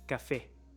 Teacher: the emphasis on the last syllable does not occur naturally